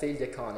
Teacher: Well, I suppose there will be a difference in pronunciation, that the consonants will have, like, it's not a broad L there, so like a Y sound more than a L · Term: slender L